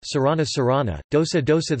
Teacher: The Sanskrit sibilants ś, ṣ, and s merge as Pali s